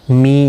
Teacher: می یا مدہ ہے، ایک الف کی مقدار کے برابر کھینچ کر پڑھیں گے